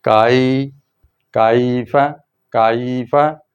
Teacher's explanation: لین، لین کیا ہوتی ہے کہ آواز مڑ جاتی ہے، دیکھیں زبر کی آواز اوپر جاتی ہے، یا کی آواز نیچے آتی ہے، تو یہ زبر کی آواز اوپر جا کے نیچے آ جائے گی